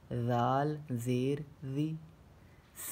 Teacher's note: زال میں زبان کی نوک ہلکی سی باہر نکلتی ہے